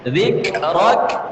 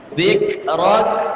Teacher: laka dzikrak, 2 kali kafnya sukun. Dzikrak, ya, dialirkan nafasnya.